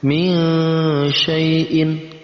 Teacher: Ada nun mati bertemu dengan shin, masuk dalam kategori ikhfa. Kita samarkan juga dengan eng.